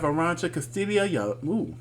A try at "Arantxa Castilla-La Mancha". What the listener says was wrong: Arantxa Castilla-La Mancha. You didn't roll your R's.